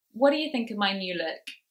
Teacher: think of my new look there of course we have elision that t sound has disappeared we've gone straight to the duh